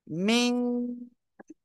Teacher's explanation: মিম কোন জায়গা থেকে উচ্চারণ হবে দুই ঠেটের শুকনো অংশ থেকে দুই ঠোঁটের শুকনো অংশ থেকে মিম উচ্চারিত হবে